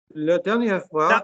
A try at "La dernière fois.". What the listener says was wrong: No, la, not le. La.